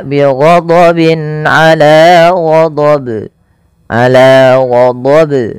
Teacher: Yang benar adalah tidak menambahkan hamzah dan dia harus memantul.